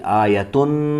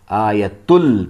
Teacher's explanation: جو نون کی آواز آتی تھی آیتن، یہ والی آواز نہیں آئے گی، آیتل پڑھیں گے سیدھا. یہاں پر نون مشدد ہے تو غنہ ہوگا.